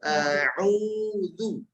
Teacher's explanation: Artinya menggabungkan dua bibir sehingga betul-betul huruf yang harokatnya dhammah betul-betul menjadi harokatnya u